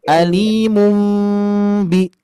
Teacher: harus ada mimnya, harus ada gunnahnya, ma'al ikhfa, harus disamarkan pula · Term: iqlab